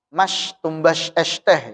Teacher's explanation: sebagian orang Jawa ada orang Jawa itu dia sin-nya itu tafasyi